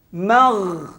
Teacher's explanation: Dia bukan huruf qalqalah. Ya, bukan huruf ada detakkan, tak ada. Ghain cuma ada bunyi gelegak aja.